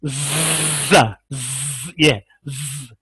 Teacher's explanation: उर्दू में कहते हैं सीटी, इंग्लिश में कहते हैं विसल, और अरबी में कहते हैं सफ़ीर। अदायगी के वक्त हरूफ में तेज सीटी पैदा हो, और वो सीटी क्या है, जा, सीन और साद में पाई जाती है।